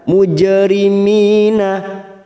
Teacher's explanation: jim sukun qalqalah sugro kita pantulkan. Mujrimina Mi kasrah bertemu ya sukun 2 harokat.